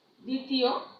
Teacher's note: এই দয়ের পরে যে বফলাটা আছে সেটা অনুচ্চারিত থাকবে, মানে উচ্চারণ হবে না